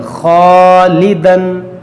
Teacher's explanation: الف سے پہلے موٹا حرف ہے خا, تو اس الف کو موٹا کریں گے